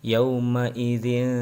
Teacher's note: ikhfa ya dibaca samar-samar dan sedikit dengung